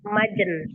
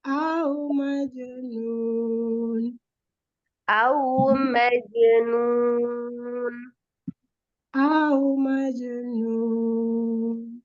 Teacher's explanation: qalqalah jimnya itu jangan ditasdidkan ke nun